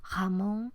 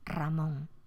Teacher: es como cuando un hablante de francés quiere articular nuestra r es un sonido sonoro pero ovular se articula en la campanilla